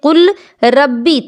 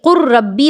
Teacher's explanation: قاف پر جو قاف لام پیش قل جو تھا، اس لام پر جو جزم تھا اس جزم کو ختم کر دیا گیا، یعنی کہ اس لام کو را سے بدل دیا گیا اور را پر تشدید لگا دی گئی، کیونکہ یہ ربی تھا صرف ایک را کے ساتھ۔ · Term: ادغام